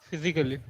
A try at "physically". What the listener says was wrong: Same, A should be ignored, not physically, physically. the rule is that ALLY at the end,